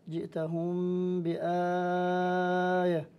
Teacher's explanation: الميم الساكنة قبل الباء أيضا حكم الإخفاء، جئتهم بآية، إذا قرأنا لورش هنا نمد مد البدل مدا متوسطا بأربع حركات، وأما ورش وأما قالون وحفص فيقصران.